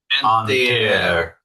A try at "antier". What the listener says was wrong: There was one that I didn't like as much because remember the A is like a ah, so it's antier. Antier, the day before yesterday.